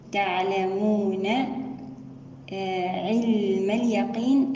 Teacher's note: العلم هنا اللام نأتي بصفة البينية لها